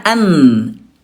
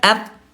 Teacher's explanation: Nih bunda, nun mati ada di gusi ya, an ya, sementara kalau ta ada di pangkal gigi di atasnya at. Di bunda hati-hati jangan didekatkan wa antum, itu salah, nanti jadi keidhar ya. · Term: akrob